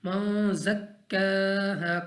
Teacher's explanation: काफ को हमने खींचना है क्योंकि काफ पर खड़ी ज़बर है, और यहाँ पे अलिफ मद्दा है, इसको भी खींच कर पढ़ना है · ज़ा हरूफ इख्फा में से है, तो हमने इसको गुन्ना करके पढ़ना है